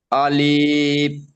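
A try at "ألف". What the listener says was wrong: আলিফটা টান দেবেন না, আলিফটা একদম টান ছাড়া পড়ুন। আলিফ, আলিফ,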